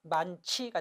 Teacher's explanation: 히읗과 지읒이 만나면 치읒, 많치가 됩니다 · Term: 자음 축약